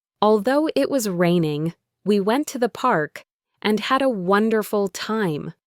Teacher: There are three thought groups there, and each one has its own little piece of the melody.